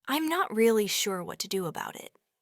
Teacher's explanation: They might stress the word sure. The pitch of their voice might go down at the end. They will link the words about and it to sound like a boot eat.